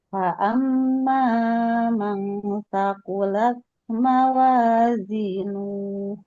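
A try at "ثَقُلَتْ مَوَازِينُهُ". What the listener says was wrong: Saqulat. Nah, ini ada desisnya sedikit. Saqulat. Saqulat. Begitu. Kemudian mawazi ditekan. Mawazi. Zinuh. Nuhnya nggak boleh dipanjangin. Mawazinuh. Mawazinuh.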